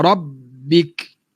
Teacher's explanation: Jangan lalukan suara ba. Sebaliknya kita putuskan suara ba. Rabbik. Bari bawah ba, bi. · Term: sabdukan ba